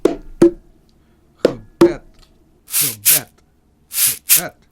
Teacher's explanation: In the second part, in the word bed, we have the stressed short E sound. · Gebed, gebed, gebed. The first part of the word, the prefix ge, is unstressed. The second part of the word, bed, is stressed. In the first part of the word, the prefix ge, we have the schwa sound. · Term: word stress